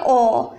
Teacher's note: ओ कंठ भी बोल रहा है और लिप भी बोल रहा है। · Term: कंठ और ओष्ठ